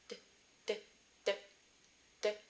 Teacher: It's called your alveolar ridge. And the D sound is made with the tip of your tongue on your alveolar ridge.